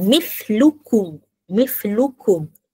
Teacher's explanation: Nyata di bibir. Bila kita sebut mlukum, mim tu nyata bunyi dia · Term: izhar syafawi